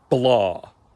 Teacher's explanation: probably you can hear a more open vowel